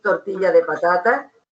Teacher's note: otro rasgo que es inevitable en determinados andaluces que es la abertura de las vocales finales